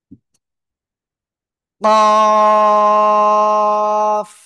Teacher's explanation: জিব্বার গোড়া, তার বরাবর উপরে তালুর সাথে লাগাবো, লাগাবো উপরে, লাগিয়ে একটু মোটা বড় আওয়াজে আমরা চার আলিফটা নিয়ে উচ্চারণ করব।